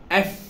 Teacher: উপরের দাঁত আছে না, উপরের দাঁত, উপরের দাঁতের সাথে নিচের ঠোঁট লেগে যাবে উচ্চারণ করার সময়, তখন বাতাস বেরোবে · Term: এফ এর উচ্চারণ